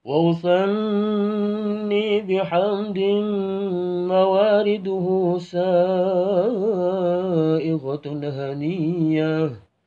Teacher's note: wa usani diawali dengan naik suaranya